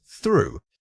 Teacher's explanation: This word combines the unvoiced with a lengthy vowel sound, so you need to maintain that controlled airflow for longer.